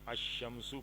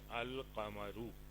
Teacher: اس میں لام نہیں پڑھا جائے گا، شین ڈائریکٹلی پڑھا جائے گا